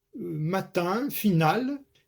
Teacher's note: Matin, final, eh bien, l'accent tonique sera sur tin et nal.